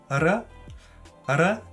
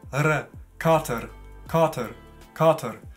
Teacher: Linguistisch nennt man das einen alveolaren Flap